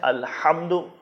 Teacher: الحمد، اس میں ہا ہے جو حلق کے درمیان سے ادا ہوگا